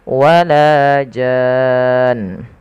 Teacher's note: Yang pertama pada lafal jan, ini pada dasarnya dia adalah mad lazim kalimi musaqqal, yang dimana dia wajib dipanjangkan 6 harokat